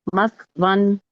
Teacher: سا میں سیٹی کی آواز نہیں آنی چاہیے. مسون مت ون زبان کی ٹپ آگے کے 2 دانتوں کی ٹپ سے ٹچ کر کے پڑھیے.